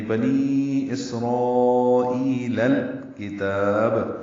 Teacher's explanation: لام ساکن پہ اظہار قمری ہے، کاف باریک ہے، تا کو باریک پڑھیں گے، با ساکن پہ قلقلہ کریں گے وقفن، اور وقفن ہی تا کو زیادہ لمبا کریں گے کیونکہ مد عارض للسکون یا مد وقفی بن گئی ہے با ساکن ہونے کی وجہ سے.